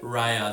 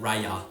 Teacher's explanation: My tongue has to do a lot less to change in rhea than rya.